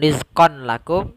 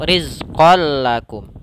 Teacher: lanjut kepada tanwin yang bertemu lam maka langsung dimasukkan ke lam ini kita namakan dengan Idgham bila gunah yaitu ononnya langsung masuk